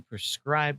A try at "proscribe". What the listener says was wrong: Proscribe, not prescribe. Yes, but it sounded like you said prescribe, which is, the O was very